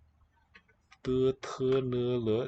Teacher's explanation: These are also dental, and they're stops.